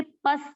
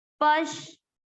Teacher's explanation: पस नहीं बोलना है इसको, प के बाद में श